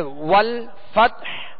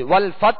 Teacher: حا ساکن کریں گے اور حا کی آواز پر جو ہے وہ سانس اور آواز دونوں توڑ دیں گے، یعنی حا کی آواز واضح ہوگی.